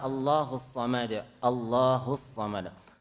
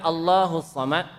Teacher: Allah tebal ya, karena sebelumnya baris atas A.